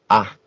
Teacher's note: es que las cuerdas vibran, y se intenta abrir lo máximo la boca, es decir, poniendo la lengua, como aplanando mucho la lengua.